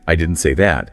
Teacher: clarifies a point by stressing that, implying maybe they said something else similar, but not that specific thing. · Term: word stress